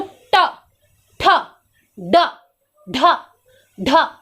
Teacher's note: हमारा जीभ पूरा मुड़ जा रहा है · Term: मूर्धा